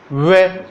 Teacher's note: इसका उच्चारण स्थान हो जाता है दंत और ओष्ठ। वे बोलते, वे बोलने पर अपने जो है वे, तो अपने होठ प्रभावित होते हैं और अपने दंत और ओष्ठ, अपने दांत भी प्रभावित होते हैं और ओष्ठ भी प्रभावित होने के कारण इस वे का उच्चारण स्थान क्या हो जाता है? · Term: दंतोष्ठ